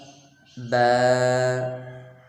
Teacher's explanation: با دونوں ہونٹوں کے تر حصے سے